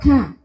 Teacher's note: Kaf ini mempunyai sifat hames, yaitu nafasnya keluar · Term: sifat hams